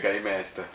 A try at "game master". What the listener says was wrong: please emphasize the M in the word. So, because it didn't sound like you said the M there, you know.